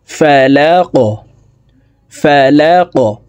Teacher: কফকে ওয়াকফের ক্ষেত্রে সাকিন করে ফেলবো। কফ যেহেতু কলকলার হরফ, উপরের দিকে ধাবিত করে ধাক্কা দিয়ে উচ্চারণ করব।